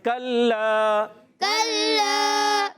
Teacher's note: کاف زبان کی جڑ, تعلق سختی سے کاف ادا ہوتا ہے. کلا لام مشدد ذرا رک کر ادا کریں گے